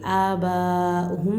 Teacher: ये वाव लिखा जाता है लेकिन पढ़ा नहीं जाता, वाव का आवाज़ नहीं आना है, हमज़ा का आना है। · मीम साकिन के बाद है ना इजहार का फ़ा है तो ज़ाहिर कर कर पढ़ना चाहिए